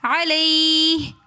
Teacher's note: علیہ میں یا ساکن اس سے پہلے زبر ہے، تو یا لین ہونے کی وجہ سے ہم اس کو نہیں کھینچ رہے، علیہ وقف کی صورت میں پڑھیں گے علیہ۔